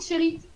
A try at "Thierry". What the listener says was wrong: les gens, ils prononcent pas toujours le tché, tu vois. Genre, alors parfois, ils m'appellent Chéri.